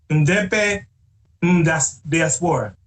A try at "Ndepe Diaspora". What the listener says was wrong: It's called, I think it's the N is silent, so it's DP Diaspora.